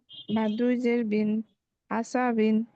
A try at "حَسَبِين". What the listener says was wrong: গলা নিতে হবে হাসাবিন